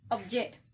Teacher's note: trace is in the first syllable object in the noun and the word as a verb the stress is in the second syllable